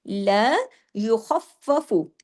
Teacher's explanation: نا کہ ہنسنے کی طرح آپ کا چہرہ کھنچے۔ لا یخفف، خا کو ہیوی کرنا ہے اس کے اندر، باقی تمام باریک حروف ہیں